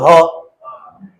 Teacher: ह बोलोगे तो गले में वाइब्रेशन होती है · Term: सघोष